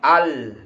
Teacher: huruf lam, ketika menyebut lam al, berarti ujung lidah menyentuh langit-langit